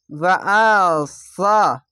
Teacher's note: ওয়াসা, এখানে একটি সিন, একটি ছোট সিন বড় সিনের মতন হবে না, একটি সা আছে, হালকা জিভে বের করে উচ্চারণ করতে হবে সা।